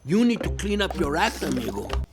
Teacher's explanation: the r sound from your connects to the next vowel sound